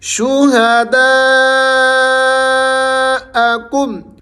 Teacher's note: دا کو آپ نے کھینچ کر پڑھنا ہے، اس کے اوپر بڑی مد آ رہی ہے